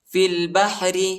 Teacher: را کو باریک پڑھیں گے، نرم پڑھیں گے، موٹا نہیں پڑھیں گے